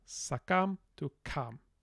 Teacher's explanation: in Pkwak G, Galactic Sand dialect, that S now drops off to become kam. So from sakam to kam.